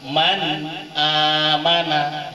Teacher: Idhar itu walaupun nunnya itu dibaca jelas, tapi sifat hunnah yang ada pada nun itu tidak boleh hilang.